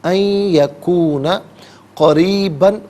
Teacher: یا کی آواز کو غننے کے ساتھ ادا کریں گے۔ ان یکونا غلط، ان یکونا قریباً، را کے نیچے زیر ہے، را کو باریک کر کے پڑھا جائے گا، وقف کی صورت میں قریبا پڑھیں گے کہ 2 زبر کی تنوین وقف میں الف سے چینج ہو جاتی ہے۔